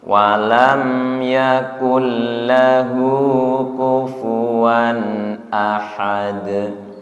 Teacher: Wan tanwin bertemu alif idhar, okay. Sama ketika ada suara n mempertahankan sifat tawassutnya